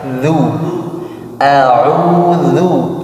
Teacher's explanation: ujung lidahnya keluarkan, bergesekan dengan gigi seri atas.